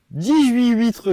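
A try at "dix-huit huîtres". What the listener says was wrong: Non, c'est pas huîtres, c'est 18 huîtres, il y a une liaison. Pas 18 huîtres, on dirait un gosse de 3 ans. 18 huîtres.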